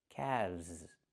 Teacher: The L is silent and we pronounce the V sound with vibration plus the Z sound like zebra together.